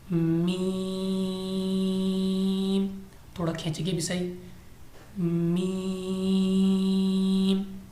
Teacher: میم دونوں ہونٹوں کے خشک حصہ سے ادا کریں گے